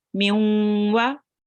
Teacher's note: There is a little bit of nasal sound, but not complete nasal sound, okay? So it's not not full nasal sound. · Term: half nasal sound